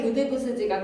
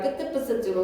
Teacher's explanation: 예사소리 그드브스지가 끄드브스즈로 소리가 나는 현상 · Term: 된 소리